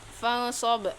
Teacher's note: ikhfa hakiki karena nun sukun bertemu shad, dibaca samar dan dengung.